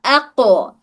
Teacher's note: صفت شدہ ہے، شدہ کی وجہ سے پہلے آواز رک جا رہی ہے، اس میں اق، اور اس میں قلقلہ کی صفت ہے، اس کی وجہ سے آواز میں ایک جھٹکا آ رہا